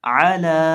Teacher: लाम को एक अलिफ के बराबर खींच के पढ़ेंगे। देखिए अगर हम यहाँ लाम को बहुत ज़्यादा लंबा कर देते हैं तो ये भी ठीक नहीं है।